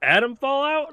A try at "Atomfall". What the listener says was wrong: You gotta cut the out off.